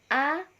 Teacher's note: vokal yang diucapkan dengan bentuk bibir tidak bulat atau terbentang lebar